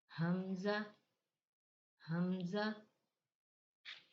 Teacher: हमजा भी हलक के नीचे वाले हिस्से से अदा होता है